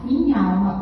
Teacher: O nha de minha some diante do a de alma. Porque alma, esse a de alma, é a tônica da palavra. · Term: crase